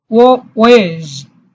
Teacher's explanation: This L is silent in British accent.